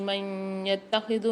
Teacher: نون ساکن کے بعد یا مشدد آ رہی ہے ادغام مال غنہ کے 4 حروفوں میں سے، یہاں پر ہم غنہ کر کے پڑھیں گے ادغام کے ساتھ